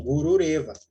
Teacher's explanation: Aí o que a regra diz? Que a minha visarga vai se transformar em um repa.